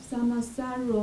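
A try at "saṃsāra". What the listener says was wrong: No. Sama is different meaning. Samsara. Samsara.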